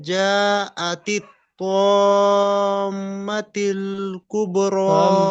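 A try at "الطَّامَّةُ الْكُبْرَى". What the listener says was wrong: মাতিল নয়, মাতুল, তালাম পেশ তুল হয়, তিল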